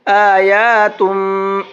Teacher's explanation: اور تم کے اندر غنہ کر کے پڑھیں گے